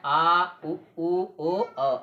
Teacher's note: पश्च स्वर वे स्वर जिनके उच्चारण में जिह्वा का पश्च भाग प्रयुक्त होता है